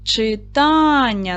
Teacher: Читання на другий склад падає. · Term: наголос